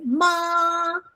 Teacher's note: The first one basically is above your head and go flat